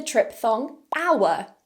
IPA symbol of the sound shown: aʊə